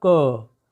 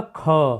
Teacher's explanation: जैसे हमने बोला बोला क, तो क्या हुई? कम श्वास निकली। लेकिन हमने बोला ख, तो क्या हो? ख में अधिक श्वास निकल रही है।